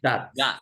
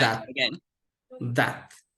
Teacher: So it's fricative with dentals. So we use the dents and then we go and explode in the mouth.